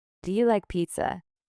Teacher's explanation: Your voice rises on pizza. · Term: rising intonation